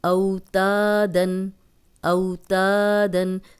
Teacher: صرف الف مدہ لمبا ہو رہا ہے، واو لین لمبی نہیں ہو رہی